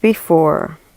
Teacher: the basic unit is a two syllable foot which in this case consists of an unstressed syllable followed by a stressed syllable